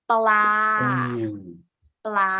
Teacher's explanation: we pronounce the cluster, the two consonant sound together as an initial consonant sound